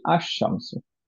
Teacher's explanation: শামসের সামনে যদি আমরা দি সান বলতে চাই, আল নিয়ে আসলাম, তখন আমরা পড়ি আশ শামসু, আল শামসু পড়ি না, কারণ লামের সাথে শিনটা মার্জ হয়ে যাচ্ছে